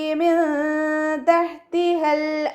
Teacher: ഇവിടെ വീണ്ടും നൂൻ സാക്കിനയ്ക്ക് ശേഷം താ വന്നു, ഇഖ്ഫാൻ്റെ ലെറ്ററായിട്ടുള്ള താ വന്നു, അപ്പോൾ നമ്മളവിടെ നൂൻ സാക്കിനയെ മറച്ചു വെച്ചിട്ട് മണിച്ചോതി കൊടുക്കുക.